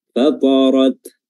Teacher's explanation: Ada udara yang keluar ketika ta ini sukun, dan itulah yang dinamakan dengan hams.